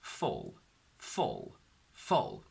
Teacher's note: So when we put this sound next to the U of full, it's not just like saying f, u, l next to each other, but this l sound distorts the U and makes it more into a sort of all, so it becomes full.